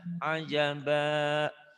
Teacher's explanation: Hati-hati jangan ajabah. Jangan ada haknya.